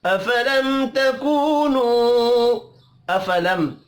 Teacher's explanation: मीम साकिन के बाद ता है, इजहार शफ़ी होगा, गुन्ना नहीं होगा. तकूनु दो वाव मद्दा है, दोनों को एक एक अलिफ के बराबर खींच कर पढ़ेंगे.